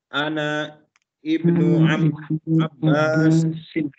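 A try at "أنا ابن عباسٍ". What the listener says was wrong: Abbas. San sin sun. Ana ibnu Abbasin. Jadi ana ibnu Abbasin. Membacanya sebetulnya yang lebih tepat adalah ana benu. Jadi nggak perlu dibaca i-nya ya. Karena di ibnu ini i-nya kasrohnya adalah kasroh tambahan.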